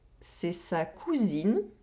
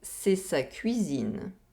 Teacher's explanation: We have the [u] sound in the first sentence, and the [ɥi] sound in the second sentence.